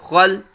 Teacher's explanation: قلقلہ نہیں یہاں ہونا چاہیے، لام پہ آواز ساکن ہو جائے